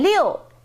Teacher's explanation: liu is six in chinese and liu is the fourth tone